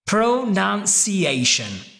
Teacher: Because I went pretty slow, I overemphasized the first syllable.